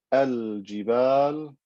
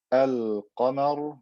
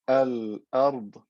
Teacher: in all these cases, I'm going to pronounce the lam clearly when saying the word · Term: lam al-qamariyya